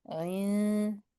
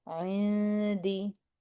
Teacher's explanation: Bringing them into place and then making the sound of the noon in our nose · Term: hiding our noon